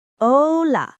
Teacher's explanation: Very close to Spanish, but that A is often stretched a little longer.